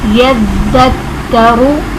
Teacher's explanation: ज़ाल बिल्कुल नरमी के साथ पढ़ा जाएगा, ना इसमें सीटी होगी ना इसमें सख्ती होगी